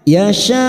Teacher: ada mad yang bertemu dengan hamzah dalam satu kalimat, namanya mad wajib muttasil, 4 harokat kita panjangkan sambil kita wakafkan.